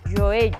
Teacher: porque ten o fonema G e a lateral palatal.